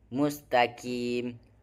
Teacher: qaf keluar dari pangkal lidah terdalam. Suara lebih bulat dan tebal. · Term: huruf qaf